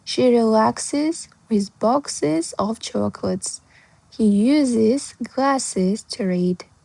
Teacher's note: Сондықтан оларға жұмсақ біздің әсіміз з болып дыбысталады. Және де егер де біздің етістіктер, жалпы сөздер өзі s-ке бітіп тұрса, оны одан сайын с деп ысылдамау үшін is деп дыбыстаймыз